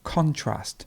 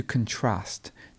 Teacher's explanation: you would have the stress at the beginning for the noun and the stress at the end for the verb